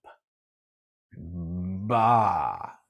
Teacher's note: i make a baa though especially if i exaggerate it ba my vocal cords start vibrating before my lips open up